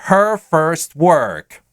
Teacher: Retroflex, retro – назад, flex – сгибаться. То есть язык сгибается назад, примерно в то положение, в котором мы произносим русское «ж». Чуть расслабляем и получаем согласный «р».